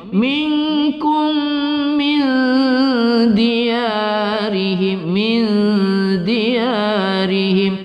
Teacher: mim sukun bertemu mim kita baca idgham mutamassilan bi gunnah, kita baca berdengung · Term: idgham mimi